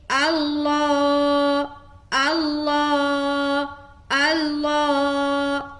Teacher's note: لفظ اللہ اور اس سے پہلے زبر آ گیا تو لفظ اللہ کا لام کو موٹا رکھنا ہے